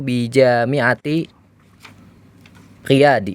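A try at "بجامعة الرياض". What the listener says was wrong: Ya, huruf ra ini kan huruf apa? Huruf syamsiah ya, maka dilebur bi jami'atir Riyadi. Jadi jawabannya yadrusu bi jami'atir Riyadi.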